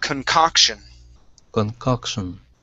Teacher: our stress is on that second o